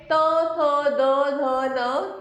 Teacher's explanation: त वर्ग, जिसका उच्चारण हम दांत से करते हैं।